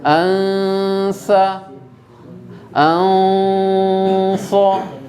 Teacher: Jadi nun sukun seakan-akan dia mau masuk kepada huruf ta, ya, atau anka, ya, ansa, anso. Nun sukun seakan-akan mau masuk pada huruf shad. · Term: ikhfa